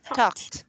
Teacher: the ED here is pronounced as T. Okay, it's past tense.